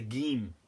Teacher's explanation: the Egyptians will pronounce a jim as a geem. And some people pronounce the qaf as a gaf, like in Saudi and the Gulf.